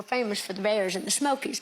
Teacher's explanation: I was told to listen for a sh sound on the S's.